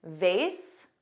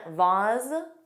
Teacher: vase, which rhymes with face, and vase, which has an ah but a z sound